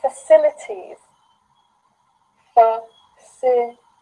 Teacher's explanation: the stress is here in the second syllable, facilities